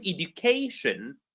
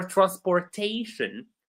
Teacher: when we have words that end in shin, Tion, we stress the syllable right before that